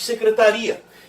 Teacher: A sílaba tônica deixou de ser o tá e passou a ser o ri. Dessa forma, se a sílaba tônica deixou de ser o tá e passou a ser o i, que era semivogal, passou a ser vogal.